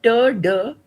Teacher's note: We are saying ter, de are alveolar plosives because alveolar is the place of articulation and plosive is the manner of articulation. We know that for both ter and de, it is the blade of the tongue which comes into contact with the alveolar ridge, causing a complete closure. · for both ter and de, it is the blade of the tongue which comes into contact with the alveolar ridge, causing a complete closure. Because it's a complete closure, the air escapes with an explosion, and that is why they're called plosive sounds.